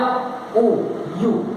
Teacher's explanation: या ऊ, यू उड़िया में लिखा हूं, ये हिंदी में यू बोलते समय हमें दो चीज को मिलाना पड़ता है। फर्स्ट या बोलते समय माउथ का एक पार्ट दूसरे को छूता है, मदद लेता है, तो या साउंड एक कंसोनेंटल साउंड है, ऊ साउंड एक वावेल साउंड है।